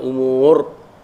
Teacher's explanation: Ra tu ra baris di atas. Jadi kita baca dengan tebal lah. Sebelum dia pun tidak ada kasrah.